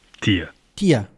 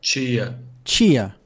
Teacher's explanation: The Brazilian sounds j and ch result from palatalization. Palatalization also occurs in de and te when they're unstressed with no accent mark and when they're followed by a in the next syllable.